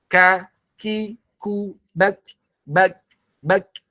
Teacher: Tipis aja anginnya. Ya, jangan terlalu besar. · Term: hamas